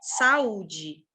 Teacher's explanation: No caso de saúde, o nosso U ele é forte. Ele não só é forte, como ele é a sílaba tônica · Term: hiato